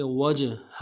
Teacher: وجہہ، واو کو جیم کے ساتھ ملانا ہے، جیم جب ساکن ہو تو قلقلہ ہوگا، قلقلہ کریں گے